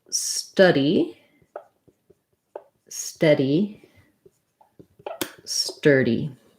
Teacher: What we have here is just, of course, a difference for the vowels. Study has the schwa, central, study. Steady has the eh, which is our red tent vowel. So, and then sturdy has an so the UR says the ER sound.